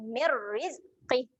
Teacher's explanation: untuk bacaan asimilasi kita masukkan terus bunyi pada huruf ra tu